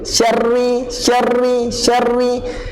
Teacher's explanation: Okay, syarri, shin masukkan terus ke dalam huruf ra. Syarri, ra ni dia mesti ada takrir. Takrir ni maksudnya ulangan.